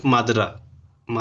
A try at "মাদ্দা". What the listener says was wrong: মাদ্রা নয়, মাদ্দা। ময় আকার দয় দয় আকার হ, মাদ্দা। আলিফ মাদ্দা।